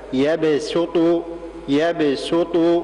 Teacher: لا بد من ترقيق السين، ترقيق السين مع ضمها جيدا. بعض الناس يقلب هذه السين إلى صاد، هذا لا يصح · كلمة يبسط بارك الله فيكم لا بد من ترقيق السين، ترقيق السين مع ضمها جيدا